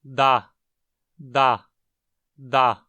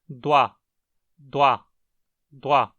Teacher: Ao labializarmos, o que quase sempre acontece é doa, doa, doa. Não só arredondamos os lábios, como também levantamos o dorso da língua em direção ao palato mole, tornando-a velarizada também. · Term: lábio-velarizada